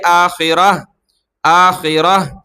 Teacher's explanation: جہاں یہ گول تا آئے گی تو وقف کریں گے، رکیں گے تو ہا پڑھیں گے آخرہ، آخرہ۔